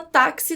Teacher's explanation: o x nessa palavra tem som de k s tem som de duas letras